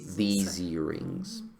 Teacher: La S se vuelve, se sonoriza, se vuelve zzz